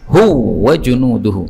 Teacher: ini wawu ketemu dengan wawu boleh idgham menjadi hu wa junuduhu